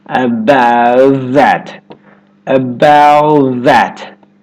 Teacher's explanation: The tongue tip stays up for the T and goes straight into the TH sound. The tongue tip goes onto the front teeth for the TH sound.